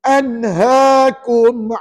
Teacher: Izhar halqi. Nak baca macam mana izhar halqi ni? Nyata terang tanpa dengung.